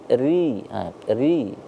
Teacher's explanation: harus dibaca tarqiq, tipis, dibaca ri, ri, ra, ri, ru, seperti itu, tipis dia di ujung lidah, ya.